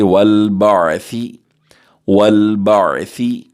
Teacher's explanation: ثا کو باریکی سے پڑھیں گے اور نرمی سے پڑھیں گے